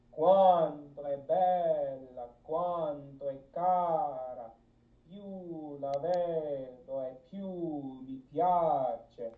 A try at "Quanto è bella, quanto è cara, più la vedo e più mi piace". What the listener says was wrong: Hell yeah, that's exactly, that's it.